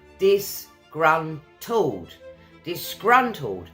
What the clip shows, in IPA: dɪsˈgrʌn.təld